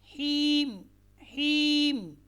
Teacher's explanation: या साकिन और उससे पहले ज़ेर हो तो उसे कहा जाता है याई मद्दा। याई मद्दा ये मुंह के खाली हिस्से से अदा होती है और इसकी जो मिकदार है वो एक अलिफ़ की मिकदार है। यानी जितनी देर में आप एक उंगली बंद उंगली को खोलते हैं उतनी देर आपने इसको लंबा करना है।